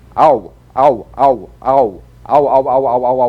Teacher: a combination of the largest lip opening number five a with the smallest number one ooh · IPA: /aʊ/